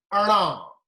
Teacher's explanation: it is a retroflex, but a little bit nasal in it. So the air comes out of the nose.